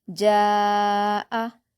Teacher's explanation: من بعد، میم پر الف مدہ ہے 2 حرکات کھینچ کر پڑھیں گے، ما، جیم پر الف مدہ ہے اور الف مدہ کے بعد حمزہ اسی کلمے میں ہے تو مد متصل ہوگا اور اس کو ہم 5 حرکات کے برابر کھینچ کر پڑھیں گے